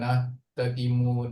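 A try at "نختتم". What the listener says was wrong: Nakhtatim bil kha ya.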